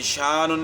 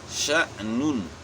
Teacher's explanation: کہ وہ بہت ضروری ہے کہ حمزہ جب ساکن ہوتا ہے، جب حمزہ ساکن ہو اس میں جھٹکا ہوتا ہے